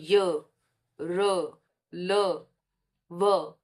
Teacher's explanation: ये जब उच्चारण कर रहे हैं तो ये क्या है? इनमें स्वर तंत्रिकाओं में कंपन हो रहा है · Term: अंतस्थ व्यंजनों